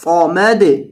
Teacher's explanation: اور صاد کو موٹا کریں گے، سمد نہیں صمد، صمد یعنی صاد پر کر کے پڑھا جاتا ہے۔